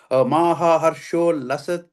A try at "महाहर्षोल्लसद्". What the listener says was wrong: No, Harsho Lalat. The Sa becomes a La. So just change it to a La.